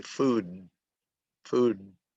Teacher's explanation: Of course, normally when I'm talking, I will just say food, and you will hear the at the end, but I don't say food, but I'm just exaggerating right now. But it should be food, food with a voicing at the end